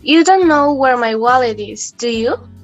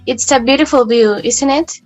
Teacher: with rising intonation it sounds like a real question but if our intonation falls it sounds more like a statement that doesn't require a real answer